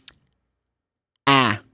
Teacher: it's not a like in Portuguese it's like it's kind of mix between a and e